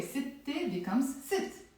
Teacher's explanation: I have to say ست أشخاص because I'm dropping the ت مربوطة and with it goes the sound A